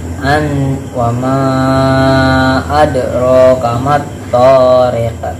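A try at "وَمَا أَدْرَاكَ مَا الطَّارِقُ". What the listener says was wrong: Littariq, bukan tariq. I pakai i.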